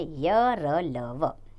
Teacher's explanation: अंतस्थ व्यंजनों में जीभ मुख के किसी भी भाग को पूरी तरह से स्पर्श नहीं करती है, हवा भी बहुत कम समय के लिए ठहरती है